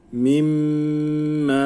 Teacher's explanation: m'nin yanında uzatma harfi olduğu için m'yi uzatıyor